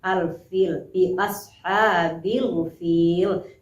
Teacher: hukum alif lamnya adalah alif lam qamariyah, karena lamnya dibaca dengan jelas